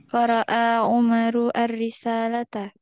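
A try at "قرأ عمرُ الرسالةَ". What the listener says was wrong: Nah, itu langsung bacanya. Umarur langsung. Disambungkan.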